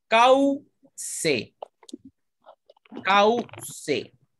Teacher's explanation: Hay una vocal abierta y una vocal cerrada. No la podemos separar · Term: diptongo